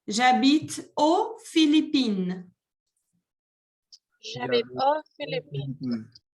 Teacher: En este caso, el país empieza con consonante, por ende no se pronuncia la X.